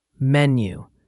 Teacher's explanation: menu has the stress on the first syllable.